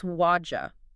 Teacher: the d plus y makes a j sound and the t in what flaps to a d sound before it